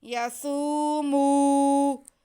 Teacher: یسومو، سین اور میم کے بعد کو ایک جیسا ہی کھینچیں گے ایک الف کے برابر۔ یسومو، میم کی آواز ناک میں نہ جائے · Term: واو مدہ